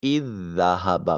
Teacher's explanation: جیسے اذ ذہب، اصل میں یہ از ذہب تھا، اذ میں پہلا زال اور پھر ذہبہ میں بھی زال، یہ 2 زال ایک جگہ، 2 ہم نام اور 2 ہم شکل حروف ایک ساتھ اکٹھے آ گئے، پہلا ساکن اور دوسرا متحرک تھا، پہلے زال کو دوسرے میں شامل کر دیا اور پہلے کو سکپ کرتے ہوئے حمزہ کو براہ راست ذہبہ کے زال کے ساتھ اذ ذہبہ پڑھا۔ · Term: ادغام مثلین